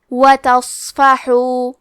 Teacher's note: صاد حروف التفخیم میں سے ہے تو ہم یہ حرف کو موٹی آواز میں پڑھیں گے. کیونکہ یہاں صاد ساکن ہے لہذا ہمیں صاد کو ہمزے سے پڑھنا ہے.